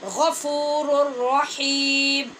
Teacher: نون تنوین کے بعد را حروف یرمالون میں سے وہ ہے جس میں ادغام غنے کے بغیر ہوتا ہے